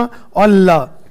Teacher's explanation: देखो, यह ठीक वहीं छूता है। जीभ का अगला भाग ऊपरी दांत की जड़ को छू रहा है। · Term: एल्वियोलर